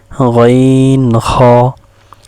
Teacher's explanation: তিন নাম্বার মাখরাজ হলুকের শেষ হইতে